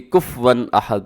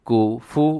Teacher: فا ساکن کرتے ہیں جبکہ فا کے اوپر بھی پیش ہے، کاف پیش کو، فا پیش فو، کوفو، کفون احد، وَلَمْ یَکُن لَهُ کُفُوًا احد۔